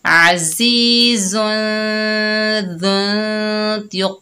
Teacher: जा जो है सख्ती और सीटी वाला हरूफ है और दाल नरमी से अदा होगा। ठीक है, तो जा और दाल में फ़र्क करके पढ़ेंगे।